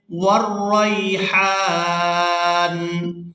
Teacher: یہاں پر بھی آیت مکمل ہو رہی ہے، وقف کریں گے تو وقف کی صورت میں نون جو ہے یہ ساکن ہو جائے گا، ہا کو کھینچتے ہوئے نون ساکن کے ساتھ ملائیں گے